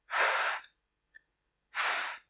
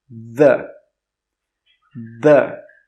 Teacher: So it's the same sound, but in the first sound, we don't turn our voice on. But in the second way to pronounce it, we turn our voice on.